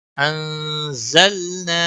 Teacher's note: نون ساکن ہے، اس پر اخفا ہوگا، زا کو تھوڑا سختی کے ساتھ پڑھنا ہے